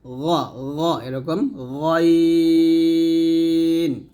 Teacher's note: গাইনটা আমরা হলকের শেষ থেকে মোটা উচ্চারণ করব